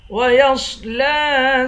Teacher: لام پر کھڑا زبر ہے، اس کو ایک الف کی مقدار کھینچ کر پڑھیں گے